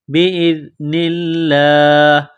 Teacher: زال کو پڑھتے وقت زبان تھوڑی سی باہر نکالیں گے، زال کو نرم کریں گے. لفظ اللہ کے نام سے پہلے زیر ہے تو لفظ اللہ کے نام کو باریک کرنا ہے.